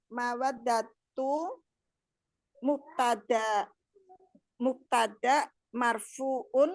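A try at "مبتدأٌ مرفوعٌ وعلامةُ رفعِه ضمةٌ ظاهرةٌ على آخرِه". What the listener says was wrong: Mubtadaun. Mana unnya?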